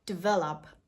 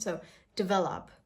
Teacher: A very small I sound after the D sound.